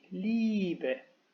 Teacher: Luego, si en la escritura tenemos IE, el diptongo en la fonética se dirá I, como una I larga, como una I dos veces